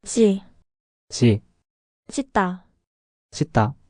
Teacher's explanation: The bass sound is su. You make the same sound as su, but with more tension in your throat.